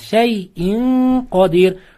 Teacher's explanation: N harfidan so'ng 15 taxfo harflari kelib qolsa nun harfini o'sha harflarning chiqadigan joyga yashirib ozgina damoq bilan o'qiladi. Ix'fo qoidasi sukunlik nunlarda.